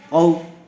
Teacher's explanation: واو ساکن سے پہلے زبر آیا ہوا ہے، اس لیے لین کا قاعدہ ہوگا. اس کو نرم آواز سے اور جلد ادا کریں گے